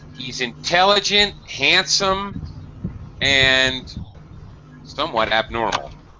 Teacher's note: We go up, up, down. All right, listing things. · So you need to have a rising intonation at the end because you're listing clauses.